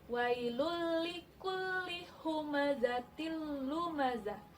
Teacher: hukumnya idgham bilagunnah jadi bacaannya tidak boleh dengung